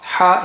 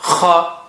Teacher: Ha is soft, kha, strong airflow.